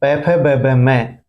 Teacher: ओठों के स्पर्श से बोले जाते हैं, उपुप ध्यानी या नाम ओष्टो, उ और प वर्ग प फ ब ब में सभी ओष्ठ्य वर्ण कहलाते हैं।